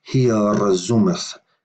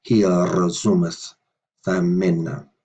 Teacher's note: the S is voiced there because it's connected with the R